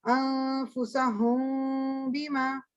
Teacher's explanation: اس کو کہتے ہیں اخفا شفوی، یعنی ہونٹوں کا اخفا، میننگ کہ دونوں ہونٹ پورے جڑیں گے نہیں. ٹھیک ہے نا، اس میں پھر ساؤنڈ نکلے گی جہاں پر بھی میم کے بعد با آ جائے گا.